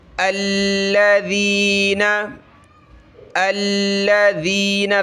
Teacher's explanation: ذال پہ تھوڑی سی زبان باہر نکالیں، نرم کر کے پڑھیں اس کو.